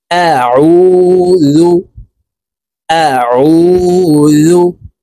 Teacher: আইনের উচ্চারণ হলকের মধ্যখান থেকে চাপ দিয়ে উচ্চারণ করব, এভাবে পড়ব।